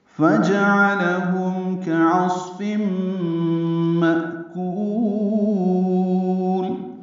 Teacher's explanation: فا جیم عین لام سب زبرے ہیں، جلدی پڑھیں گے، کسی کو لمبا نہیں کرنا، عین وسط حلق سے ادا کرنا. ہم میں اظہار شفوی ہے میم ساکن پہ، اس کے بعد کاف آ رہا ہے، اظہار شفوی ہوگا. · کاف باریک ہے، صاد پر ہے اور اس میں ہم سے، فم میں ادغام ناقص ہے مع الغنہ. مأکول، م حمزہ ساکن جھٹکے سے ادا کریں گے، کاف کو لمبا کریں گے اور لام ساکن کر دیں گے.